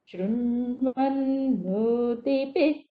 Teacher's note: Shru is down. Nva is udata. Then nu is again anudata. Ti is udata. It goes up like from down, up, it will go like that.